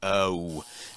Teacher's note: finishing this O sound with a very tight ooh. It's like oh, but that's a little bit too tense, a little bit too much.